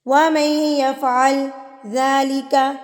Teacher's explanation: آپ نے اس کو ملا دینا ہے اور میم کو ڈائریکٹ جا کے آپ نے یا سے ملا کے پڑھنا ہے. نون کو آپ نہیں پڑھیں گے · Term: مدغم